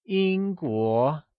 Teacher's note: 英国 is pronounced with a high level tone on the I and a mid-rising tone on the O